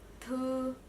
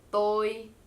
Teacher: Th is aspirated, so you feel the air blowing out of your mouth